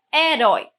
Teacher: Nós vamos perceber que aqui na segunda sílaba nós temos um ditongo. Eu tenho uma vogal mais uma semivogal.